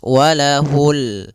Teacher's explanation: Di sini ada bacaan alif lam pada lafal ini adalah lafal bacaan alif lam qamariyah yaitu alif lam yang ditulis dan dibaca yaitu suara lamnya terbaca dengan jelas